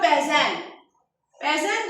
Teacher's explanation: Bəzən deyəndə vurgu ikiyə düşəcək və uzanma da olmayacaq